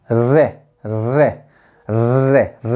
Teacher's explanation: हमारी जीभ तालु पे जाती है, लेकिन क्या वो टच करती है, अच्छे से नहीं करती, बस छू के निकल जाती है हल्की सी